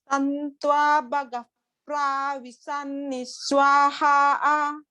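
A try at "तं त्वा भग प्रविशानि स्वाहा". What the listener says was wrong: What you're doing is that you're putting too long time on the akara in the pra.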